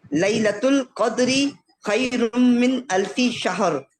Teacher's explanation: शहर हा भी नहीं मोटा करना, शीन भी नहीं है, लेकिन रा के ऊपर पहुंचते ही मोटा कर देना उसको